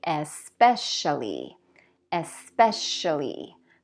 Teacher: Especially has stress on the second syllable, so you're going to say especially, especially.